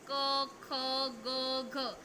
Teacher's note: ધારો કે ક ખ ગ અને ઘ આ કંઠ્ય વ્યંજનો છે. આ વ્યંજનોનું તમે ઉચ્ચારણ કરો છો ત્યારે તમારો અવાજ જે તમારો ઉચ્ચારણ છે એ કંઠમાંથી આવે છે.